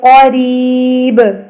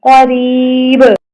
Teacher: قاف کو موٹا را کو باریک با کے اوپر کلکلا